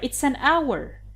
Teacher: although hour begins with h but h is silent so it begins with the vowel